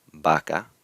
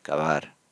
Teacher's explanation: If the B or V start the word, they get the hard B sound, vaca. If the B or V are within the word, then they get a softer sound